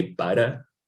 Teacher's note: it kind of like taps the alveolar when the sound is articulated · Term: tab or a flat